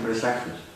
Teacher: es un fenómeno que en fonética se le conoce como que la vocal se vuelve semiconsonante